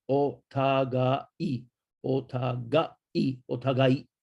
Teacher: the AI too, you have to be careful, is a double length vowel